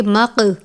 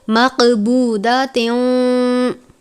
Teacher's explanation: قلقلہ کے معنی ہم نے پڑھے تھے جنبش یعنی حرکت کے ہیں، یہاں پر قاف پر قلقلہ ہے، اس لیے ہم قاف کو واضح کر کے پڑھیں گے